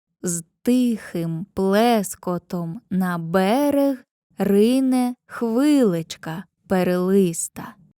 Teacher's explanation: третя стопа в рядках містить два ненаголошених склади. Це допоміжна стопа пірихій.